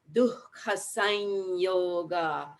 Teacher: that nya sound that initiates at the soft palate in the back of the mouth, but front of the throat